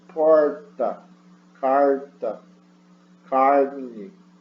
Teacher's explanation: A retroflex é quando você pega a ponta da língua e dobra, toca no palato, e aí você faz aquele R do caipira, como porta, carta, carne, tá?